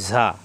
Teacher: এই প্রত্যেকটা ঝা জিব্বা নিচে দাঁতে চাপ দিয়ে উচ্চারণ হবে